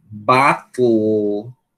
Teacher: Eu tô dizendo T, e sem tirar a língua do ponto de realização do T, eu tô dizendo L, e não estou dizendo nenhuma vogal depois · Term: L silábico